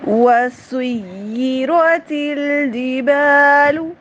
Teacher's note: سین کی سیٹی، سین کی خاص صفت ہے، سین کی سیٹی پرومیننٹ رکھنی ہے۔ سین میں اگر سیٹی نہیں ہوگی تو یہ سا بن جائے گا، ٹھیک ہے، حرام غلطی ہو جائے گی، لفظ کا مطلب بدل جائے گا۔